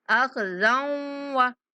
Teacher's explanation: ख़ा को पुर और ज़ाल को वाव के साथ मिलाते हुए गुन्ना के साथ अदा करेंगे।